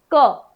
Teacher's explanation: ठीक है, तो अब क्या होता है, जब हम क का उच्चारण कर रहे हो तो क, अब हमारी वायु जो है कंठ से निकलती है, टकराते हुए मुख से बाहर आ जाती है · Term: स्पर्श व्यंजन